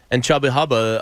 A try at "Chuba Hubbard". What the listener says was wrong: Chubba Chuba. It's Chuba Hubbard. Chuba. Chuba.